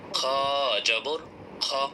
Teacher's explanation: আর মোটা অক্ষরের একটি গুণাবলী হলো, এই মোটা অক্ষরের উপর যখন জবর চলে আসে তখন জবরের উচ্চারণ সাধারণত আকার হওয়া সত্ত্বেও মোটা অক্ষরের উপর জবর আসার কারণে এই মোটা অক্ষরের খাসিলত অনুযায়ী, একটা গুণাবলী অনুযায়ী জবরের উচ্চারণটা আকার হবে না, আকার ছাড়া পড়তে হবে।